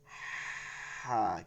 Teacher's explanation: হলকের মধ্যখান থেকে, মধ্যখানে নিয়ে আওয়াজে চাপ দিয়ে আওয়াজটাকে কি করতে হবে, আওয়াজটাকে চাপ দিবেন গলার মধ্যে। এটা আমি পড়ানোর সময় আপনাকে ধরে ধরে বুঝাইছি, কিন্তু দেখে দেখাই দেখাই আওয়াজকে চাপ দিবেন এবং হালকা উচ্চারণে করতে হবে।